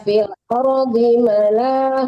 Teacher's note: ma-nya jangan panjangkan, lanya yang panjang